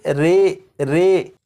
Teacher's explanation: یہاں پر لکھا ہے امالہ، زبر کو زیر کی طرف اور الف کو یا کی طرف مائل کر کے پڑھنے کو امالہ کہتے ہیں۔ امالہ کی راء کو اردو کے لفظ قطرے کی راء کی طرح پڑھیں گے، یعنی ری نہیں بلکہ رے پڑھیں گے۔